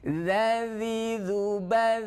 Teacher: za ketika sukun masih mengalir suaranya karena sifatnya adalah rukhawah bukan syiddah. Ya, kalau syiddah tertahan, kalau rukhawah artinya mengalir suaranya.